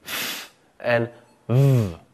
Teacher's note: Sounds which utilize the bottom lip and the top row of teeth are known as labial dental sounds. The two sounds that are used in this way are the f and v sounds.